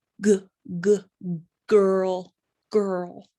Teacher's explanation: next thing g g girl girl right g g girl girl it makes the vibration good so this one is voiced